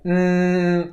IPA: n